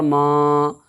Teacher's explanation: خڑا زبر کو ایک الف کے برابر کھینچ کر کے ادا کریں گے